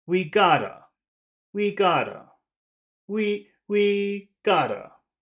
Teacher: because the word we is at the beginning of the phrase we'll want to start that in a high tone also and go down a little bit so we gotta we gotta we we gotta high to low